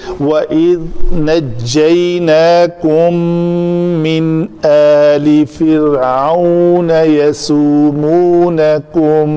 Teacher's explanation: نون ساکن ہے اور اس کے بعد حروف حلقی حمزہ میں سے آ رہا ہے تو اس نون کا اظہار ہوگا